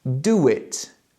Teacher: I am linking do and it with a W sound.